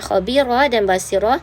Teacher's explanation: kalimah khabirah dan basirah dibaca dengan nipiskan kedua-dua huruf ra